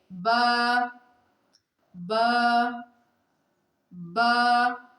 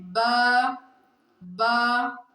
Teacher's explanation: یہ اردو میں آپ پڑھتے ہیں نا بے، دونوں ہونٹ ملانے سے، دونوں ہونٹ کے تری حصے کو ملانے سے با ادا ہوتا ہے